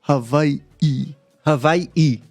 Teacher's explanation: And then there's an okina, which is like what you would call a glottal stop. So it's a stop in between two I's